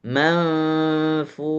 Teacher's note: suara mengucapkan dengung dengan nun maka posisi mulut sudah siap-siap membaca fa. Jadi bacanya man manfus bukan manfus tapi manfus masukkan ke dalam huruf fa manfus.